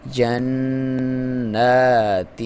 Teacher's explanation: یہاں پہ غنہ بھی ہوگا، جو ناک میں سے آواز نکالیں گے اس کی لمبائی بھی 1 الف کے برابر ہوگی، اور جو پھر آپ نون کو جب پڑھیں گے تو اس کی لمبائی بھی 1 الف کے برابر ہوگی۔